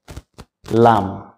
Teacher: জিহ্বার আগার কিনারা উপরে দাঁতের মাড়ির সাথে লাগিয়ে লাম।